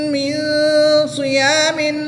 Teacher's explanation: نون ساکن کے بعد صاد حرف اخفا میں سے ہے تو یہاں پر اخفا ہوگا